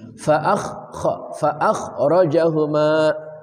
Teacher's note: kha dari ujung kerongkongan